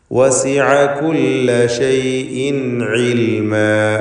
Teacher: ഷൈഇൻ എന്നതിലെ തൻവീനിനെ ഇൽഹാർ ഹൽക്കി നൽകി മണിക്കാതെ വെളിവാക്കേണ്ടതാണ്. ശേഷം ഹൽക്കിൻ്റെ ഹർഫായ ഹംസയാണ് വന്നത്.